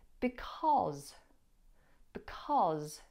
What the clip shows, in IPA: bɪˊkɒz